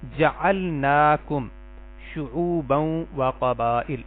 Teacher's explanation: نا پڑھنا تھا، ہم نے اس کو تھوڑا سا کم کر دیا، یعنی کھڑی زبر ادا کرنی تھی، ایک الف کے برابر لمبا کرنا تھا